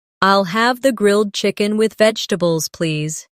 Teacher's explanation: Pay attention to the rhythm. The main stress is on grilled chicken and vegetables.